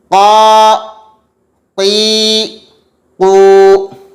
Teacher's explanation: एक बात और ध्यान रखें कि इसको अदा करते हुए पुर पढ़ेंगे, मोटा पढ़ेंगे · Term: क़ाफ़